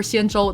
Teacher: the tones for shinjulu they're both first tones right flat tones